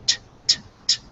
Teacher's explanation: when you go t t t, your throat doesn't vibrate. But if you make sure that your throat is vibrating the whole time, eedle, then you'll have to make that d sound, because you can't make a t and have your throat vibrate. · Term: t sound